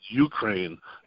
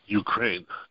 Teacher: The emphasis is on the second vowel sound, not the first.